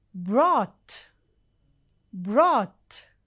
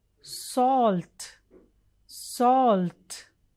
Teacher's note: this is not o but long oh so you round your mouth and say oh